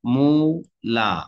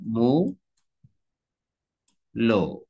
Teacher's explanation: এইটা হচ্ছে পরিবর্তন, আ থেকে ও।